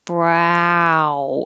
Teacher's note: the ow needs to open a lot when you start. Brow. And then close with an oo.